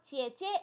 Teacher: 원래는 원래대로 읽으면 지어, 지어가 돼야 되는데 네, 에로 바뀌어서 지에, 지에 이렇게 되는 거예요. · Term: 에 소리로 바뀌어요